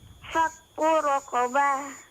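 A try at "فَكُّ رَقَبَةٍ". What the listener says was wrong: Qafnya diperjelas.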